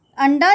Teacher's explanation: ण जो है ट वर्ग का 5वां वर्ण है, और जब हम अंडा शब्द का उच्चारण करते हैं तो ण की ध्वनि आती है